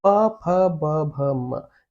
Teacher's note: आप बिना होठ टच किए व्यंजन नहीं निकाल पाएंगे